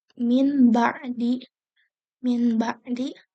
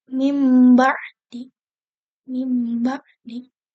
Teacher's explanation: Nah, bertemunya ini sifat si iqlab ini tuh hanya terdapat pada huruf ba saja. Jadi kalau nun mati bertemu dengan ba itu dibacanya menjadi iqlab dan bacanya tuh berubah menjadi mim. Contohnya ada kalimat min ba'di.